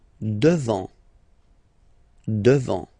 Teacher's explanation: Devant. Final T not pronounced.